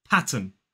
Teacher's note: please notice that it is not pattern we don't pronounce the r and also that final n Sound the final n is pronounced · P, a, t, pat. And then the second syllable is a schwa and n